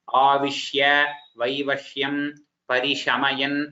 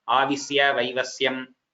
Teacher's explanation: Here the shakara you are pronouncing it as sakara.